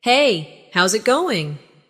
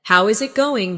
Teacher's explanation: The is disappears, and the final g in going often softens. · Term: connected speech